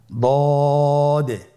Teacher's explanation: আলহামদুলিল্লাহ, দদ হরফটিও মোটা হরফ, মোটা করে উচ্চারণ করতে হবে। দদের মাখরাজ জিহ্বার গোড়ার কিনারা সামনের উপরের 2 দাঁতের গোড়ার সঙ্গে লাগিয়ে উচ্চারিত হয়।